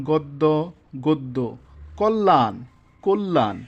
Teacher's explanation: আদ্য অ এর পরে যদি জ ফালা থাকে তবে অ এর উচ্চারণ ও এর মত হবে